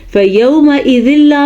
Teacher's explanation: فَيَوْمَئِذٍ لا میں پھر سے ادغام بلا غنہ ہوتا ہے